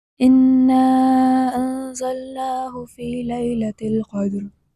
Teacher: یہاں انا میں نون مشدد ہے اور اسے خیشوم یعنی ناک سے پڑھا جائے گا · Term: غنہ